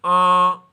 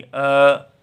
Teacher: मुंह और नासिका दोनों से वायु आएगी। तो आ और केवल मुंह से आएगी। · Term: अनुनासिक